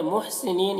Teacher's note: حا کو حلق سے ادا کریں گے